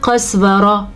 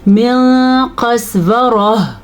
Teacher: اگر ہا آخر میں آ رہی تو اس کی آواز آنی چاہیے